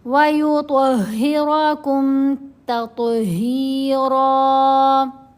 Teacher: تو کو موٹا پڑھنا ہے، را کو بھی موٹا پڑھنا ہے. یہ جو ہا ہے اس کو گلے کے بالکل نیچے والے حصے سے ادا کیا جائے گا